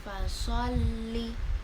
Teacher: Lamnya di sini agak ditekan karena ada tasjid.